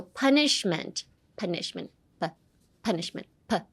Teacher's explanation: A lot of air more air than you think on the P pa.